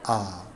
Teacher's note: उच्चारण के समय मुख द्वार पूरा खुलता है तथा जीभ को बीच में रखा जाता है। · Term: विव्रत